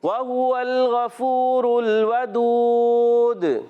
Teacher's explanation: ودود پھر ہو جائے گا مدے اور ساتھ ہوگا قلقلہ بھی